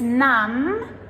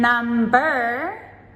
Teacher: Note that with the words numb, N-U-M-B, and number, they are completely different. So numb has the silent B, but number, now we pronounce that B.